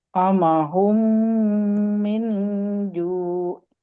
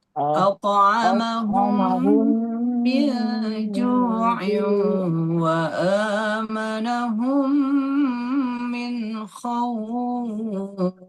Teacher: Masuk ke mim selanjutnya, kemudian ditahan 2 harokat, dan kemudian dengung karena dia kan tasydid tuh jatuhnya. Jadi dengungnya juga khaisyum akmal, sempurna banget. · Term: idgham mimi